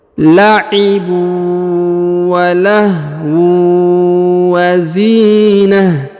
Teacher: Huruf zi dipanjangkan 2 harokat karena di depannya terdapat ya sukun.